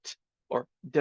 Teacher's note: that tongue is slightly behind the teeth on that bumpy ridge there. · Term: tongue behind our teeth